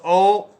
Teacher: और ओ कंठोष्टम, ओ ए प्लस ऊ का कंठोष्ट ओ बनता है, तो उसका कंठ प्लस ओष्ठ कंठोष्ट हो जाएगा